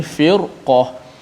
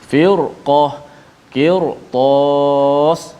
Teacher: kita tetap baca ra tu tebal walaupun sebelumnya nipis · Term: ra yang dibaca dengan tebal